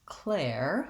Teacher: the stress is on the first syllable, clair. So that syllable is long